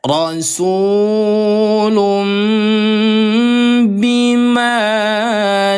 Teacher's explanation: pengucapan nun sukun atau tanwin yang menjadi mim ketika bertemu dengan huruf ba disertai gunah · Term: iqlab